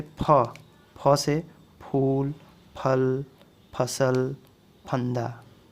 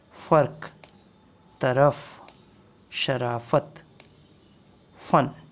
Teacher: उसी तरीके से फ को हम लोग PH फ, और जैसे ही इसमें नुक्ता लग गया तो इसको हम F के रूप में पढ़ेंगे